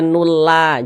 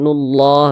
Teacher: Lafaz Allah sebelumnya ada huruf yang memiliki tanda baca dhammah, maka lafaz Allahnya itu dibaca tebal. Nah, sehingga dibaca yubayyinullah, nullah ditebalkan, jangan dibaca nulla, jangan, tapi ditebalkan nullah, begitu.